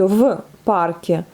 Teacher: La lettre v s'assourdit au contact de la lettre sourde p.